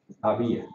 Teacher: el acento le proporciona la suficiente fuerza para separarse de la otra y se produce un hiato